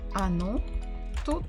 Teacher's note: Again, the word оно. The stress is on the final syllable. What about the first? Not stressed, so we say it as А.